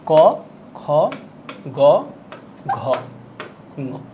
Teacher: রাখবেন এই দুইটা হচ্ছে অঘোষ বাকি তিনটা হচ্ছে ঘোষ মনে রাখলাম এক আর তিন অল্পপ্রাণ দুই আর চার মহাপ্রাণ শেষেরটা নাসিক্য